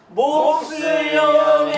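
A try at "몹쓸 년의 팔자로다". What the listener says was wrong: 몹쓸 년이 같은 음이 아니에요. 모트 저 같은 음이 아니야. 한 음 높아. 몹쓸 년에 시다. 몹쓸 년에 팔자로다.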